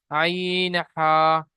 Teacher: 2 নম্বর মাখরাজ হলকের বা কণ্ঠনালী মাঝখান হতে উচ্চারিত হয় আইন হা